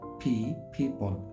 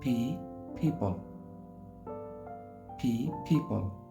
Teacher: এফ ফ্যামিলি যেই জাপান কেই কিংডম ওপেন পি পিপল দুই ঠোট একসঙ্গে মিলে উচ্চারণ হবে